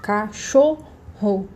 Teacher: A sílaba, aliás, mais forte é a sílaba do meio. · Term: sílaba mais forte